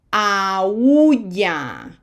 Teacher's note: this U would normally be weak and it would be joined with the strong A, but because it has an accent, it is strong, so it has to be separated